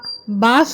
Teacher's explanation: ப அலீஃப் எங்கேருந்து உச்சரிப்பாகுதுன்னா, வாயுடைய காலியான பகுதியிலேருந்து நம்ம ஓப்பனாக நல்லா அலீஃப் அப்படின்ற சொல்லணும். ப பா சொல்லும்போது ரெண்டு உதறி டச் பண்ணி சொல்லணும்